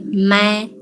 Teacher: So start with the mid-level tone